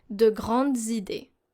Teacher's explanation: Because if we listen to it, if we don't pronounce the liaison, it will sound like it's a singular noun and adjective. Here the Z sound, the liaison, is very important simply to know if the noun is singular or plural.